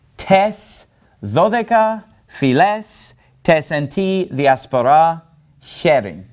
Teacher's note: all of those alpha iota diphthongs are pronounced like epsilons